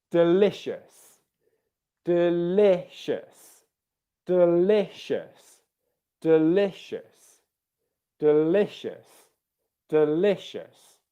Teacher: Can you hear the stress on the second syllable there?